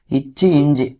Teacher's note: நாவின் இடை நடு அன்னத்தின் இடை அப்படின்னு சேர்த்திருக்கும்